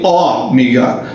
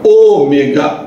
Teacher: Eu não falei ômega, eu falei ômega, O fechado. É uma vogal e uma vogal longa, O.